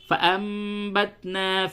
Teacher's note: کیونکہ قاعدہ یہ ہے، قاعدہ سماعت فرمائے کہ نون ساکن اور تنوین، یعنی وہ نون جس پہ جزم ہو، اور تنوین یعنی دو زبر دو زیر دو پیش، تو نون ساکن اور تنوین کے بعد جب بھی با آوے تو وہاں پہ اقلاب ہوتا ہے، یعنی نون ساکن اور تنوین کی آواز کو میم سے بدل کر کے پڑھتے ہیں